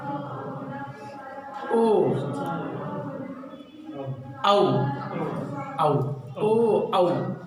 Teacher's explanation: ओ जब बोल रहे हैं तो कहीं न कहीं जो है कंठ से आवाज़ निकलती है, और ओठ आपका बिल्कुल करीब में एकदम पहुंच जाता है, वो दोनों बंद तो नहीं होता, लेकिन जो हवा है वो दोनों ओठों को बिल्कुल घर्षण करते हुए निकलती है। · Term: कंठ ओष्ठ